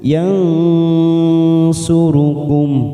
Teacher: nun sukun bertemu sod ikfa hakiki, kita samarkan 3 ketuk